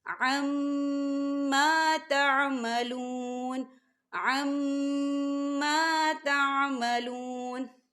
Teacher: دیکھیں عَمَّا، یہاں میم مشدد ہے تو یہاں غنہ ہوگا۔ ما، خالی الف سے پہلے زبر ہے تو یہاں پر الف مدہ ہو رہا ہے، تو ہم اسے دو حرکت کی برابر کھینچ کے پڑھیں گے۔